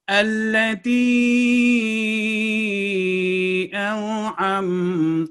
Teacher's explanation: عام لمبائی سے جو تا کے نیچے کسرہ ہے اس کو ہم نے 3 سے 5 سیکنڈ تک لمبا کیا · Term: مد صغیر